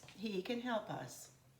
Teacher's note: But as a statement, our voice is typically a falling voice.